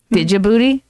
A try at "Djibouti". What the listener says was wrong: There's no D. The D is there, but you don't pronounce it.